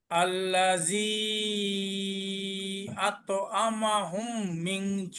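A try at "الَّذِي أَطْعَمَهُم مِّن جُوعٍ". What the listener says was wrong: আইনটা আরেকটু মোটা হবে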